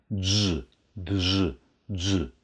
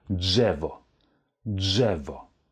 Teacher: D gefolgt von einem RZ. Die werden zusammengesprochen und ergeben den Laut Dż. Also man hört das R nicht mehr.